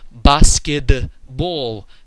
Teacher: very very distinct d in the middle of the word even though it's written with a t